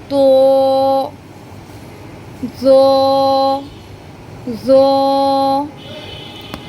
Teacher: জিহ্বার আগাটা সামনের উপরের দুই দাঁতের আগার সাথে লাগিয়ে জ উচ্চারণটা হবে, জিহ্বাটা সামান্য একটু বেরিয়ে আসবে